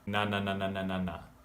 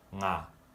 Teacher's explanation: Na is done with the front of the mouth. Na, na, na, na, na, na, na. Versus nga is done with the back.